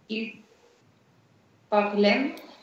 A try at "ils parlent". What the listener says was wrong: Parle, parle, да. Смотри, вот это окончание ENT никогда не читается. Поэтому получается il parle.